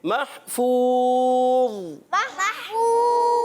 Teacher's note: ضا کو موٹا رکھیں گے مگر بغیر قلقلے کے ادا کریں گے